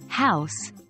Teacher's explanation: The sound H in house is a glottal sound, produced by airflow from the throat.